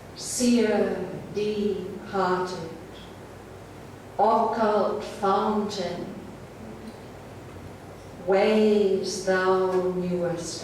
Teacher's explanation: Very obviously, the rhythm is based on a pattern of long and short syllables. The most striking feature is these 3 long syllables at the beginning of each line. · in the first lines, those three long syllables are followed by one short one